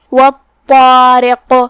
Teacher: قاف کی ادائیگی زبان کے جڑ اور تالو کے نرم حصے سے ہے، اور جو کہ قاف حروف تفخیم میں سے بھی ہے تو ہم اسے بھاری آواز میں پڑھیں گے · لہذا یہاں قاف کا تیسرا حکم بھی ہوا اور وہ ہے قلقلہ. قلقلہ کا معنی ہے حرف ساکن کو ہلانا. لہذا ہم قاف کو ہلاتے ہوئے یہ کلمہ کو پڑھیں گے